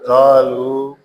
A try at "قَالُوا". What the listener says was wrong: قالو کو لمبا کرنا ہے. لام زبر، لام پیش واولو مد اصلی بن گیا اور اس کے آگے حمزہ آ گیا. تو یہ قالوا